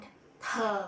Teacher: it there is no air flow coming out from your throat T in the other hand is aspirated when you pronounce it there is a air